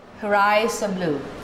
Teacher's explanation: Unstressed for her and are because it's a structure word.